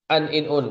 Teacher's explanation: ujung lidahnya menempel ke gusi atas dan posisi ujung lidahnya itu sedikit di bawah dari makhraj lam gitu aja disertai gunah maksudnya disertai gunah ini sebagian dan makhrajnya memang pasti menggunakan rongga hidung makanya nya ada dengungan di hidung.